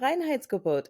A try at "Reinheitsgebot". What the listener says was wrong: Reinheitsgebot. You say Reinheitsgebot, and you're saying that R sounds almost like a V, like Reinheitsgebot. Boot though. Reinheitsgebot.